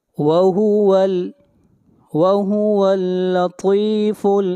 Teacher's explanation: طا کو موٹا پڑھیں گے، طا حروف مستعلیہ میں سے ہے